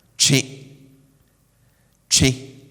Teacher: I'm pronouncing this with some sort of nasal effect